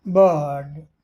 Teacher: British में बर्ड आर का उच्चारण नहीं हुआ